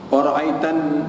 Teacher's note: nun yang bersabdu wajib dengung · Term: wajibul gunnah